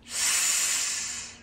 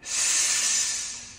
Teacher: So this is the sound that's most generally associated with S, and it's an unvoiced sound. How do I know? Because I have no vibration in my throat.